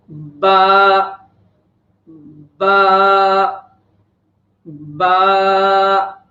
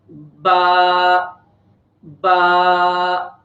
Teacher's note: दूसरा हरफ है बा, बा, बा, बा को अदा करते वक्त तो होंठ के दो हिस्से हैं, एक होंठ के बाहर वाले हिस्से होते हैं और एक होंठ के अंदरूनी वाले हिस्से होते हैं। तो बा को हम होंठ के जो अंदर वाले हिस्से हैं, जो तर वाले हिस्से हैं, यहाँ से हम नरमी के साथ अदा करेंगे।